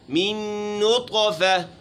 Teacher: نون مشدد ہے، غنہ ہوگا، اور طا میں قلقلہ کریں گے چونکہ حروف قلقلہ میں شامل ہے اور اس کے اوپر یہاں ساکن ہے، جزم ہے.